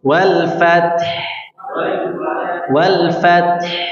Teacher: Ya, ada huruf ta, ada huruf ha. Huruf ta-nya dia mengalir suaranya, nah, mengalir nafasnya, ya.